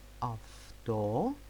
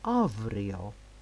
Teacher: Af before soft consonants, or av before strong consonants or vowels, like the word afto, because the T sound is a very very soft sound, and avrio, the R, as we saw, is very strong one.